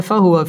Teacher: ওয়াও ঠোঁট গোল করে উচ্চারণ করতে হবে ফাহুয়া ফি জেরের বাম পাশে জাজম ওয়ালা ইয়া মদের হরফ একালিফ